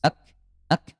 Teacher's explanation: kalau huruf kaf dia syiddah dan hams